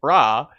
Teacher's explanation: The sound is similar to a soft Ra, where the R is lightly rolled or tapped.